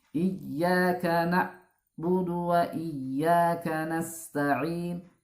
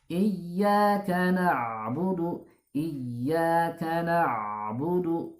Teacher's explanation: Huruf ain itu huruf tawassut, ya. Huruf tawassut, huruf pertengahan. Jadi tidak boleh suaranya itu terputus